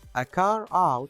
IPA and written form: ə kɑːr aʊt (a car out)